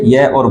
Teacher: वे व्यंजन जिनका उच्चारण करते समय श्वास वायु बिना संघर्ष के मुख से बाहर निकल जाती है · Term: संघर्षहीन व्यंजन